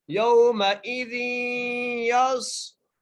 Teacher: صاد کے اوپر جزم ہے اور صاد کو موٹا کر کے پڑھا جائے گا